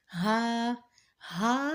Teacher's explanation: ہا ادا ہوتا ہے ہمارے حلق کے نیچے والے حصے سے اور اس کو بھاری آواز میں پڑھا جائے گا. نیچے والے حصے سے مینس جو ہمارے سینے کی طرف حصہ ہے، ہمارے حلق کا سینے کی طرف جو حصہ ہے وہاں سے ادا ہوتا ہے ہا.